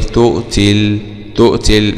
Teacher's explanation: في حالة الوصل يسقط المد الطبيعي بسبب التقاء الساكنان